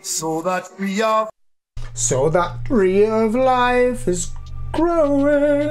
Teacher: It looks like the T in tree is missing.